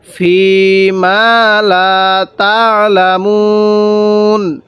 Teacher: ফি এর মধ্যে আমরা এক আলিফ টান দিব